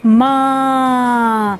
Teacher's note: मैं आपके सामने एक छोटा सा शब्द लिख रही हूँ, ठीक है, और ये आप सबको मालूम भी है, माँ। अब मेरे मुंह से भी हवा निकली और नाक से भी हवा निकली। जब दोनों तरफ से हवा निकलती है तो वहाँ पर क्या आता है, चंद्र बिंदु, माँ।